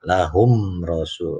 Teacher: Lahum rasu ini idhar syafawi. Ya, mim mati ketemu ro karena mimnya jelas idhar